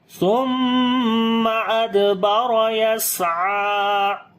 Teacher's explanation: دال کے اوپر قلقلہ کریں گے، را کو موٹا پڑھیں گے، سین کے اوپر صفت ہمس اور صفت صفی دونوں کریں گے ، عین کو لمبا کریں گے، کھڑی زبر ہے، ثم أدبر · فَكَذَّبَ وَعَصَىٰ ثُمَّ أَدْبَرَ يَسْعَىٰ، ثم، سا کو نرم پڑھیں گے، میم کے اوپر شاد ہے، غنہ کریں گے ، دال کے اوپر قلقلہ کریں گے، را کو موٹا پڑھیں